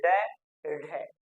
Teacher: क्योंकि उत्क्षिप्त का अर्थ होता है जीभ का पटकना और ताड़न जात का अर्थ होता है जीभ को प्रताड़ित करना। तो जब आप ड और ढ का उच्चारण करेंगे तो आप महसूस करेंगे कि जीभ को आप एकदम से पटक रहे हैं, ड ढ, जीभ को ऊपर ले जा रहे हैं, फिर एकदम से नीचे ला रहे हैं। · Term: उत्क्षिप्त या ताड़न जात